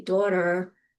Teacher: I can say um an R in my Jersey accent when I say daughter and you'll still recognize that R. It may sound distorted um if you're from California, but it is still an R.